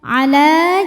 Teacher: Alif didahului fathah maka panjang dua harakat. Tapi dibaca panjangnya hanya saat berhenti saja. Kalau wasal lamnya tetap pendek, gugur madnya. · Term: mad thobi'i